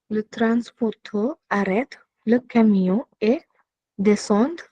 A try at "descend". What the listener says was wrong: Descend. There's no E at the end, so you say descend.